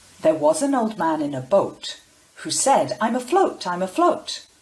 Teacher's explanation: so those stressed words was man boat remember that and then the unstressed words are said very quickly and pushed together